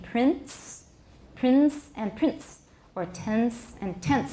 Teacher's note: All these words may be pronounced with a short voiceless stop between the nasal and the voiceless fricative, but the stop is not really an added gesture. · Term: epenthetic stops